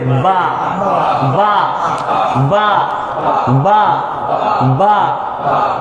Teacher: বা দুই ঠোঁটের শুকনো জায়গা মিশায়ে ছেড়ে দিতে হবে।